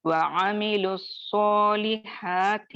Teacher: ہم پہلا والا جو ووے مدہ کا ساکن ہے، اصلی سکون ہے، اس کو حذف کر دیں گے. حذف کا معنی اس کو غائب کر دیں گے، اس کو نہیں پڑھیں گے، اس کو ڈراپ کر دیں گے.